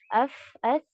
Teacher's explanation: महसूस हो रहा है कि इसमें सांस हमारी जारी है। तो ये हम्स कहलाएगा जिसमें हमारे हर्फ में सांस जारी रहने वाली है, ठीक है।